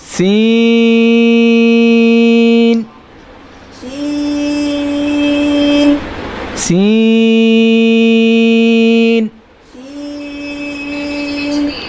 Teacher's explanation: सीन के अंदर जो है सीटी पैदा होती है, सीन पढ़ने में सीटी पैदा होती है, सीन, सीन। इसको भी 5 अलिफ की मिकदार जितना लंबा करेंगे।